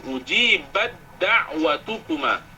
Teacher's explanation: Ujibat da'watukuma, mana badda, ta dengan dal, ta sukun, dal berbaris, maka dibaca dengan idgham. Di atas dal letakkan tanda sabdu, ujibat da'watukuma.